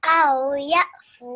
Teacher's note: fa is carrying dhamma and then waw sakin, so bit longer, 2 second time